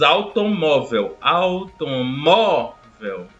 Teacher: vocês podem observar que a sílaba tônica é o mó e, por sua vez, é a penúltima. Então, nós temos uma palavra paroxítona.